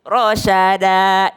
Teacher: Iya, perhatikan rasyada. Ro tebal, shin itu udah tipis. Jadi rosyada, jangan rosyoda ya.